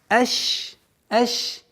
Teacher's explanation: У шина есть правило, свойство тафаши, и то есть мы договариваем полноценно ш.